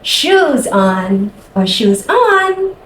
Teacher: using that exaggeration, that high and low intonation is really just to get your child's attention